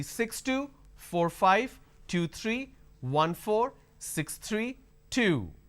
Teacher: My volume went up, but my tone, my intonation is flat.